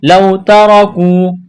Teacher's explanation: واو لین ہے، بغیر کھینچ کے پڑھنا ہے